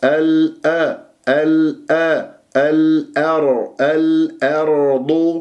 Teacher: والقرع للراء والتفخيم، والضاد مفخمة، لا أقول الأرض، لا تجعلها الضاء، الضاد من إحدى حافتي اللسان ومن الحافتين مع ما يحاذيه من الأضراس العليا